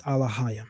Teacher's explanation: The term Alahayim replaces Hebrew vowels with Arabic-like diphthongs, adds a false I glide